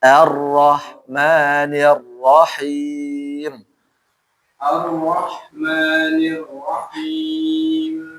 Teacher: Rnya lebih tebal lagi karena dia fathah kan. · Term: Ro-nya lebih tebal